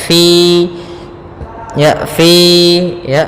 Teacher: Fa harus dialirkan nafasnya